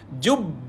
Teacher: Dia ada tahan dan juga lepaskan sebab sabdu. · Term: qalqalah akbar